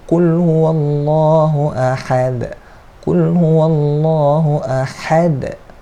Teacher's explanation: Qul huwallahu ahad, ahad, ha di sini makhraj huruf ha, ha di tengah ke kerongkong